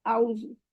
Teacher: حمزہ اور عین میں، اعوذ، اس میں آؤزو پڑھ رہے ہوتے ہیں، آؤزو، صرف حمزہ کی ساؤنڈ آ رہی ہوتی ہے، عین کی ساؤنڈ نہیں آ رہی تھی۔